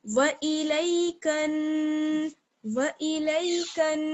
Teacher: کاف کو ہم نون سے ملائیں گے تو غنے کے ساتھ ملائیں گے کیونکہ نون پر جو ہے وہ تشدید ہے